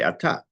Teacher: you put the accent on the second syllable. When the word is at the end of a sentence, not when you're speaking to somebody, but when you're davening, when there's a word in the Torah that's the last sentence, it changes from atah to ata.